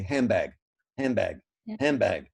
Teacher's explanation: we take the nasal n we convert it to an m and then because the m and the b are both what's · so an m is a bilabial and a b is a bilabial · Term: assimilation